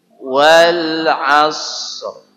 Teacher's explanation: esnya jalan dulu baru kasih R